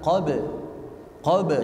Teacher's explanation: tidak ada tasdid di situ sehingga langsung mantul dihentak